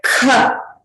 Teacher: Kha is pronounced with a mahaprana. You have to expel more air out from your throat when you're pronouncing.